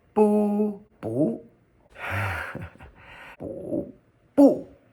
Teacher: boo which would be a fourth tone